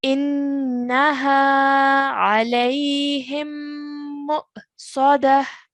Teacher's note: we have a ta al-marbuta. It will change into a ha with a sukoon on top of it. That's why we've pronounced it as sadah at the end over here.